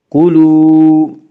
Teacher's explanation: واو مدہ وہ واو جو ساکن اس سے پہلے پیش ہو، واو مدہ کو ایک الف کے برابر کھینچ کر پڑھیں گے۔